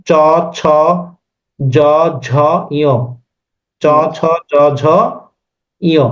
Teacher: এই জি এই স্যার। জিহ্বা মাঝামাঝিটা এই তালুতে এসে টাচ করতেছে না, চ ছ জ ঝ ইয়, চ ছ জ ঝ ইয়, ইয়।